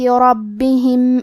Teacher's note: کلمت ربہم میں حرف الرا پہ زبر ہے لہذا ہمیں را کو تفخیم سے پڑھنا ہے. حرف البا کی تشدید کو ظاہر کریں گے.